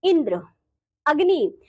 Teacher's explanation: इनमें जो संयुक्त अक्षर से पहले के अक्षर हैं जैसे कि ई और अ पर जोर दिया गया है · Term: बलाघात, शब्द बलाघात